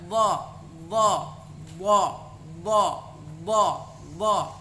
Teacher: keluar dari tarf lisan atau tepi lisan ketemu dengan salah satu gigi geraham bagian atas, baik itu yang kiri atau yang kanan.